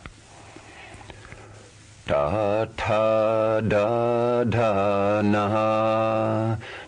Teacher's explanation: Third position, cerebral, the front roof of the mouth.